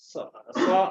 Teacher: Hames Hames berarti keluar udara